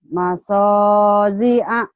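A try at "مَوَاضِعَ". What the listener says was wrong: Bukan so. Ada titiknya ini mado. Mado ji'a. Mado.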